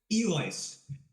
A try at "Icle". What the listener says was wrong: But the L comes after the C. It's Icle.